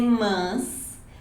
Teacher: esse som mais nasalado chama mais a atenção. Se você quer neutralizar o sotaque, use mais a vogal A aberta.